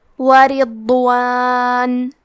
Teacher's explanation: حرف الضاد کی ادائیگی زبان کے کروٹ اور اوپر کے داڑھوں کے جڑ سے ہے